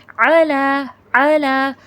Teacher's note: عین کو بھی مخرج کے ساتھ ادا کیجیے گا، اس کو حمزہ کی طرح علا نہیں پڑھیے گا۔